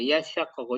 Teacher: Di dalamnya ada mengidghamkan huruf ta secara asal dalam huruf shin.